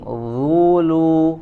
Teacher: Jadi lamnya tipis ya, tidak terpengaruh menjadi tebal dengan huruf dha.